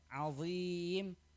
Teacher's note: Zo itu salah satu huruf tebal, itbaq, dan maka ketika membaca zo yang berharokat kasroh, dia tetap ditebalkan, azim. Jangan sampai terbaca seperti huruf dzal, azim gitu, itu salah.